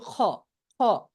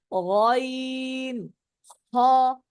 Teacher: আওয়াজটা বাজবে, এর আওয়াজটা অনেকে বলে খ খ, এটা বললে কিন্তু হবে না, তাহলে কিন্তু জিহ্বার কাজ চলে আসছে এখানে। জিহ্বার কাজ আসা যাবে না, হলকের শেষ থেকে হতে হবে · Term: 3 নম্বর মাখরাজ